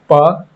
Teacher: देखिए च का, और नीचे ये प फ ब में, देखिए प फ पढ़िएगा तो ओष्ठ दोनों सटेगा